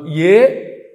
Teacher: ఏ అన్నప్పుడు కంఠము తాలువు రెండు కలిపి పనిచేస్తాయి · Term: కంఠతాలుహు